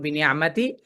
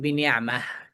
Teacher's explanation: মিলিয়ে পড়লে বড় তায়ের মতো বিনে আমাতি, আর সুকুন করলে বা থামলে বিনে আমাহ